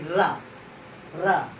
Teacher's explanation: लुंठित, जीभ पलटेगी, रा, रा, ठीक है। प्रकंपित मतलब कंपन होगा जीभ का